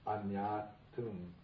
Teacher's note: It's like a chemical change takes place. And the long a becomes a short a, and the n gets doubled, so it becomes añātum.